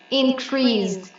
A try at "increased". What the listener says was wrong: increased. Increased. So at the end, I need to hear the d. Increased, increased.